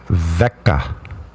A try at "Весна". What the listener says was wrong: Are you reading the letters in the Russian alphabet, or are you reading it in the English alphabet? Then some of the letters you're pronouncing wrong, because the letters they might look like your A, but it's not an A. And then there's a C after there.